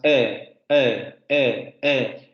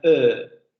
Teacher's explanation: esa vocal media en inglés es una vocal no redondeada y en francés es una vocal redondeada. No se pronuncian igual.